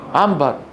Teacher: عنبر يقولها بالميم بالفطره